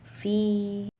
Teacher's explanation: ada kasroh yang bertemu dengan ya sukun atau dibacanya jadi panjang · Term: mad tabi'i